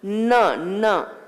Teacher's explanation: Your tongue goes to your palate. It's a palatal sound.